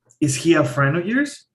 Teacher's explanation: You start low and then you are raising your voice. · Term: rising intonation